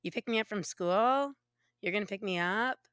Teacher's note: it sounds like they're asking questions because their voice keeps going up, their pitch rises at the ends of all their phrases and sentences like I'm doing now. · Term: upspeak